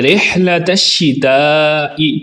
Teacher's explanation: ہا کو درست پڑھیں گے حلق کے درمیان والے حصے سے۔ الشتاء، الشتاء پر مد متصل ہے جس کو لمبا کر کے پڑھیں گے۔